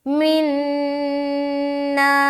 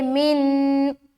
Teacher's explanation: नून मुशद्दद का गुन्ना भी किया और अलिफ मद्दा भी किया। अलिफ मद्दा करते हुए यहाँ पर स्टॉप करेंगे।